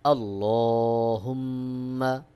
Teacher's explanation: এখানে আল্লাহ বলেছি আর হা মিম পেশ হুম মিম জবর মা মিমে তাশদিদ রয়েছে এখানে অবশ্যই আপনাকে ওয়াজিব গুন্নাহ করতে হবে